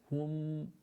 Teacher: For the ha, we have the pushing of the lips from the side, hum, and then the meme, because it's got sukoon in it, we can stay there and linger on it a little bit